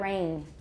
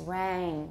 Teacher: going towards a but it's lower it's basically ab with raising make it long and the tongue has to be lower